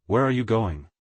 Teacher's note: falling intonation your voice goes down at the end of a sentence used in statements commands and wh questions